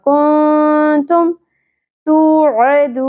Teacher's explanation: نون ساکن کے بعد حروف اخفا میں سے تا آ گیا تو یہاں پہ اخفا مع الغنہ ہوگا